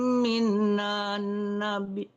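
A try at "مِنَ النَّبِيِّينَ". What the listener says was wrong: Minan, jangan minan nabi, nun yang kedua yang ada tasdidnya.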